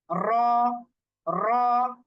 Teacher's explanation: তাকরার হচ্ছে র এর যে মাখরাজটা, র এর মাখরাজটা থেকে যদি আমরা উচ্চারণ করি তাহলে আমরা দেখবো যে র এই মাখরাজটা থেকে উচ্চারণ করার সময় জিহ্বার আগার পিঠ যখন উপরের তালুর সাথে লাগাচ্ছি তখন এই রটা যেন বারবার উচ্চারণ হচ্ছে এবং সেখানে একটা ভাইব্রেশন, কম্পন সৃষ্টি হচ্ছে